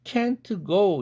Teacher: 그렇게 되면 조음위치 동화 현상이 또 일어나는 것이고 그래서 크라는 연구개음 영향 때문에 앞에 있는 은 사운드가 응이라는 연구개음으로 바뀝니다.